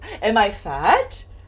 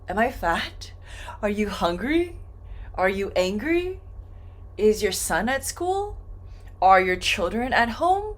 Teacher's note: Am I fat? Are you hungry? Are you angry? Is your son at school? Are your children at home? All of these are going to go up.